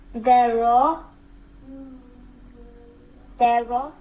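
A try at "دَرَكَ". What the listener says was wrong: No, you said dara. You put your tongue out. No need to do this here. Your tongue has nothing to do with this. None of these letters. Da, daraka.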